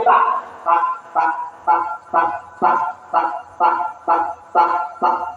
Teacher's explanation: Jadi untuk makhraj yang ke-12 di antara punggung lidah ya dengan akar gigi seri atas